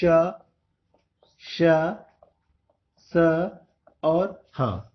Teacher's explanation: क्योंकि इनका उच्चारण करते समय मुख के अंदर गर्म वायु भर जाती है, इसीलिए इसे ऊष्म व्यंजन कहते हैं। और इनका उच्चारण करने में मुख के अंदर घर्षण होता है, इसीलिए इसको संघर्षी व्यंजन भी कहते हैं।